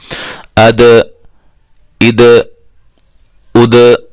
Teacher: دال حروف قلقلہ میں سے ہے، اس کو ہم ہلائیں گے